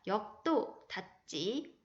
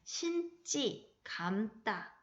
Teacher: 예사소리가 된소리로 바뀌는 현상입니다. 유형은 받침, 기역, 디귿, 비읍 뒤에 된소리가 되고요. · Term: 된소리되기